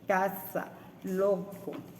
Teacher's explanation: El dorso de la lengua se eleva contra el velo del paladar, cierra la salida del aire, la punta de la lengua desciende hacia las encías de los incisivos superiores y el velo permanece cerrado y la glotis es muda y la oclusión es un poco más débil.